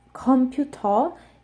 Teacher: it sounds closer to like some some varieties of English where they don't say the are at the end